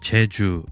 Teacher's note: The place of articulation in Korean is slightly more forward when compared to the English approximate.